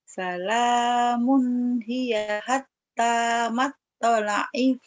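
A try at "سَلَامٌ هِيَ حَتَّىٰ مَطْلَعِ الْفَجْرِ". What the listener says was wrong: Matla'il fajr. Matla'il fajr. Ada ain. Kolkolahnya jangan telat, jangan matto, matto, matla'il segera.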